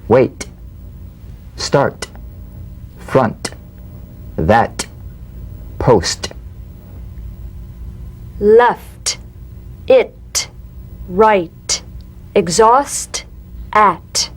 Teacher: the same staccato springing action as the D drum beat with no voice forms the light tap of the t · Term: drumbeat T